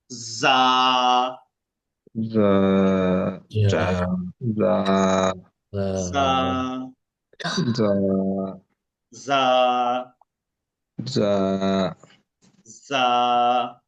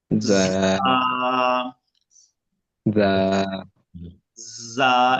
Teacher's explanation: যখন জিহ্বার আগা নিচের দুই দাঁতের পেট থেকে আগা, মাঝখান থেকে আগার দিকে লাগাবো, তখনই বাতাসটা বের হবে। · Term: অন্তস্থ জদে